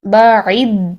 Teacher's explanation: دال پر تھوڑا سا آپ قلقلہ کریں گے یعنی دال کو تھوڑا سا ہلائیے